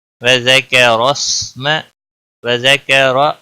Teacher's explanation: را کے اوپر زبر ہے اس لیے موٹا پڑھیں گے